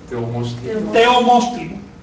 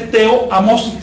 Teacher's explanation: si quieres mantener esa raíz teo, que es tan cortita, no te queda más remedio que suprimir la A. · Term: eufonía